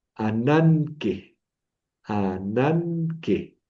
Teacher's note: La gama primera la voy a pronunciar como una ni. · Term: gama antes de una gutural